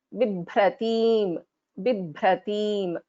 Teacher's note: Bha, this second one is Bha, is a Mahaprana, pronounced with more effort.